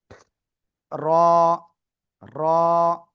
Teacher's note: জিহ্বার আগার পিঠ তার বরাবর উপরে তালুর সাথে লাগিয়ে এক আলিফটা নিয়া মোটা আওয়াজে পড়তে হবে।